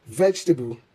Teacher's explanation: In English, unstressed vowels are often dropped or softened, resulting in 3 syllables vegetable instead of 4.